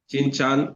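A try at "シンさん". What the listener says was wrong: Not Chan, it's San, S-A-N. Although we in Roman letters we write it as S-A-N, but the correct pronunciation is San, not San. Okay, San, San, Shin-san, San, Shin-san, Shin-san,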